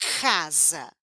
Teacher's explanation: minha língua está batendo lá atrás na garganta